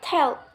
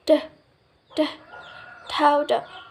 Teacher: you lift your tongue against the alveolar ridge to constrict airflow